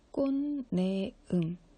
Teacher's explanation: 꽃에서 치읓 발음이 디귿으로, 이걸 음절의 끝소리 규칙이라 그러죠.